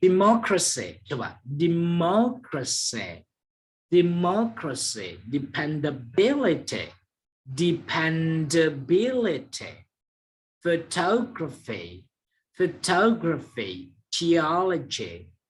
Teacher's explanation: jadi ini yang disebut dengan penekanan pada suku kata tiga terakhir